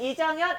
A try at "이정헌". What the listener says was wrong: 그런데 제가 이정현이 아니고 이정헌인데